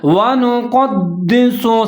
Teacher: اب یہاں پر واو کے اوپر زبر ہے، نون کے اوپر پیش ہے، قاف کے اوپر زبر ہے، اس کو موٹا پڑھنا ہے